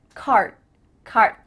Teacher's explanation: D sound but your mouth is making that shape card card my tongue is flat against the roof of my mouth to make the D but it's not coming out